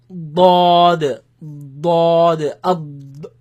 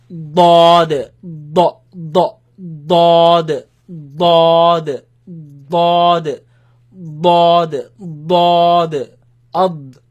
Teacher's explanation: Comes from the side of the tongue, side of the أض.